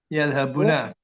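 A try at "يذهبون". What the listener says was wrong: yadhhabuna. Panjangkan juga ini cara bacanya.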